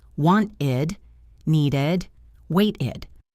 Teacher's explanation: the only time we actually say a clear ID sound, is when the verb already ends in a T or a D sound